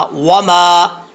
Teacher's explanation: دونوں ہونٹوں کو گول کریں گے تو واو کا مخرج پڑھا جائے گا